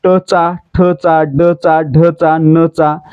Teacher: आपली जीभ आपल्या कठोर तालू आणि मृदू तालू यांच्या दरम्यानच्या भागाला स्पर्श करते, म्हणजे मूर्धेला स्पर्श करते. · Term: मूर्धन्य व्यंजनाचा गट